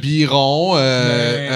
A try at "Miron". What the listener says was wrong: C'est Miron, c'est pas Biron. T'as dit Biron. T'as dit Biron.